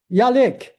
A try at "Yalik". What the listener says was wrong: it is a J, just probably like your pronunciation of it, that's all. Yeah, Jalik.